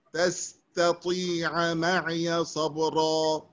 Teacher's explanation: بدنا نطلع التاء، يعني ننطق التاء تطلع الطاء لحالها